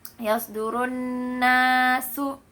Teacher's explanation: Nah, di situ juga di huruf nunnya di situ ada idgham bi gunnah. Di huruf nunnya juga di situ ada gunnah musyaddadah